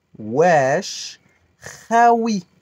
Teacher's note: au fond de la gorge comme le mot cracher